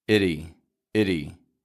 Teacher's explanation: that T isn't getting a regular T sound, is it? It's getting a flap T. Itty. Real quick and quiet.